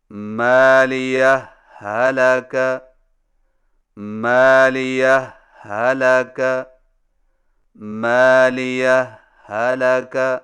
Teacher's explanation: دو الگ الگ ہاؤں سے پڑھیں، لیکن پہلی ہا پر معمولی سا وقفہ کر کے لفظ حلقہ کی ہا کو بغیر تشدید کے پڑھیں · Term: اظہار